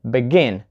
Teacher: So listen, begin, not begin. So we put the stress on the second syllable, begin